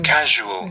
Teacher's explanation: कुछ जो है between the teeth at the side of the mouth, यहाँ मुख के किनारे पर आकर के थोड़ा सा जो है, जहाँ से हमारा आगे का दांत निकला है, यहाँ जीभ थोड़ा टच करती है, वहीं से हवा जो है घर्षण करके निकलती है, और इसमें हमारे गले में कंपन भी होता है।